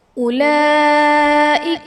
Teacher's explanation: اولئک میں لام پر کھڑا زبر ہے جو کہ الف مدہ کے قائم مقام ہے اور حرف مدہ کے بعد حمزہ اسی کلمہ میں ہے، تو یہاں پر مد متصل کا قاعدہ ہوگا